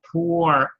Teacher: the tip of the tongue curls back a little bit as you draw out that R at the end